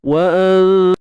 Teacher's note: sembunyikan nun mati di sisi huruf ta, di sisi huruf yang dia bertemu tu lah, kan. Dia bertemu dengan ta, so kita sembunyikan di sisi huruf ta. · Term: ikhfa haqiqi